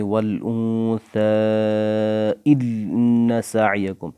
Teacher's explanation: کرنا ہے، یہاں پر پھر مد منفصل بن جائے گا، کیونکہ حرف مد کے بعد حمزہ دوسرے کلمے میں آ رہا ہے، یہاں پر مد منفصل بن جائے گا